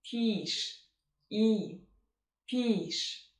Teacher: So basically your mouth is relaxed, you slightly open it, and what you hear is k, k, k. And the second syllable is stressed, it has the long E sound. Your tongue is tense and it's kind of flat and there is a lot of pressure there.